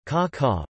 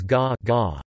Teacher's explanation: a voiceless consonant is turned into a voiced consonant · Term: dakuten